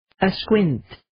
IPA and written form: ə'skwɪnt (Asquint)